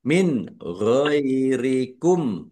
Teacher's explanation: Nun sukun bertemu dengan huruf gin. Bacaan izhar dibaca jelas.